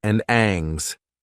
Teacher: It's common for speakers to drop the H sound from grammar words like his and her, but also dropped it from the verb hang